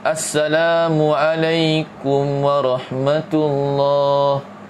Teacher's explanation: Mim mati bertemu dengan waw. Situ tak dengung. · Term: Izhar syafawi